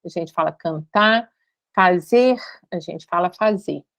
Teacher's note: os infinitivos tendem a ser sem o R final. Então, a gente, em vez de falar cantar, a gente fala cantar, fazer, a gente fala fazer.